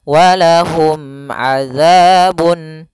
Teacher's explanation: Mim mati ketemu ain harus jelas yaitu izhar syafawi mimnya tidak boleh ditahan